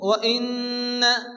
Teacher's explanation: নুনের উপরে তাসদীদ নুন গুন্না ওয়াজিব